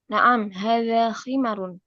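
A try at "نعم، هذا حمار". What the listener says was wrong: La, khimar atau himar? Nah, biharfil ha wala biharfil kha. Himar dengan huruf ha teman-teman atau pakai kha? Nah, biharfil ha.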